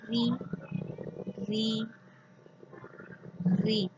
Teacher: you are taking your tip of the tongue upside, but it's not completely sticking there. From there, the aspiration comes out. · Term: semi vowel